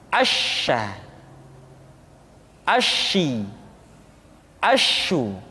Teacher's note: Dan sifat yang dimiliki oleh huruf sya yang paling nampak adalah apa yang disebut dengan sifat at-tafashi, yaitu menyebarnya angin di dalam mulut kita